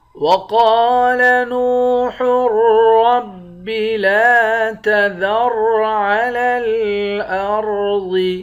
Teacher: قاف کو موٹا پڑھیں گے، قاف کے بعد الف ہے، الف حروف مدہ ہے، حروف مدہ کو ایک الف کے مقدار کھینچ کر پڑھتے ہیں۔ نون کو واو کے ساتھ ملا کر واو کو بھی ایک الف کے مقدار کھینچیں گے، یہ بھی حروف مدہ ہے۔